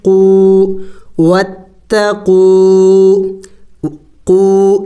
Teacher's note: واو ساکن سے پہلے جب پیش ہو تو وہ واو مدہ کہلاتا ہے. واو مدہ اس کو 1 الف کے مقدار لمبا کیا جاتا ہے